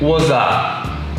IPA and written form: wə sə (was a)